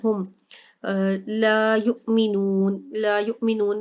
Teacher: لا یؤمنون میں یہاں پر جو حمزہ ہے یہاں پر جھٹکا دیا جائے گا کیونکہ حمزہ کے اوپر جزم آ گیا، اور نون میں وہ مدہ ہو رہا ہے اس لیے لمبا ہوگا، اور اس کے علاوہ یہاں پہ مد عارض ہو رہا ہے.